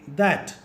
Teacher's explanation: In order to pronounce that, we will have to keep our tongue in between the frontal teeth and then say that. From now on, we will call this tongue position as TH position.